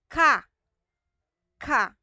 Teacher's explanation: sa ngala-ngala po natin sa velar part po natin